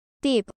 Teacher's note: se debe pronunciar de forma aspirada es decir expulsando un mayor nivel de aire y generando una ligera explosión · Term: t fuerte